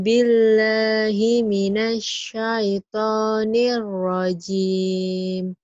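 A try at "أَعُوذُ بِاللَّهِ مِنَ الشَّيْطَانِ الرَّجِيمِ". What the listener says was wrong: Bagus, tinggal tasdidnya. Nanti disambar ya. Kurang nyambar. A'udzu billahi minasy syaithanir rajim, kurang nyamber gitu ya. Ada tasdid sabar.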